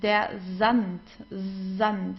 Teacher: whenever we have an S and then comes a vowel after that, like here, it starts with an S and then comes a vowel, we pronounce the S like in the English Z, so it's der Sand, Sand.